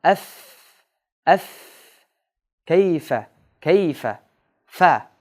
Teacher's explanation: Фа дыбышы қашқа тіштің ұшы астыңқы ерінден иш жағына тиген жерден шығады.